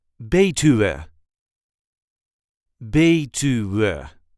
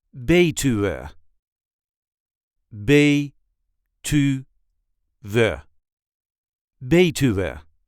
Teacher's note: There is a light emphasis on the first syllable.